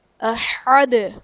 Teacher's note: دال وقف کی صورت میں ساکن ہو جائے گا اور یہ یہاں پر قلقلہ خوب ظاہر کریں گے